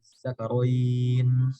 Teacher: Ibdal kan punya makna ibdal, mengganti. Punya makna dia mengganti hamzah yang kedua dengan huruf mat alif